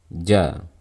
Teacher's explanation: makhraj huruf Jim bagian tengah lidah kita menempel ke langit-langit atas mulut kita tempelkan bagian tengah lidah ke bagian tengah langit-langit mulut pastikan · Jim bagian tengah lidah kita menempel ke langit-langit atas mulut kita tempelkan bagian tengah lidah ke bagian tengah langit-langit mulut pastikan menempel dengan benar dengan baik dan jangan berikan celah sedikitpun